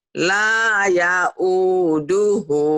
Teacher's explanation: Kan saya nanyanya cuman ya-nya pendek, yang panjang itu cuman la sama u sama hu di ujung